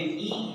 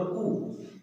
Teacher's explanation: ई का उच्चारण स्थान कौन है, तालु। उ का कौन है, ओष्ठ। ई का अभ्यंतर विवृत, उ का भी विवृत।